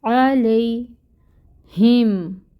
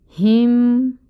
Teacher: ہا جو ہے یہ اقصی الحلق سے آئے گی آواز، اور میم کے ساتھ ملائیں گے۔